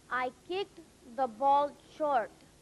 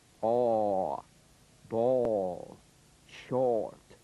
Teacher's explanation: The tendency is to close down on this vowel so it comes out more like O or instead of a well-defined aw. Hold it open in that middle position with good shape. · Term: Number three vowel